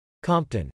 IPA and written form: ˈkɒmp tən (Compton)